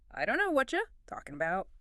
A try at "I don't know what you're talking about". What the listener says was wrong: So close, but you pronounce the tes in don't. Kill the T. Make it a grunt.